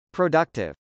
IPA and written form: prədˈʌktɪv (productive)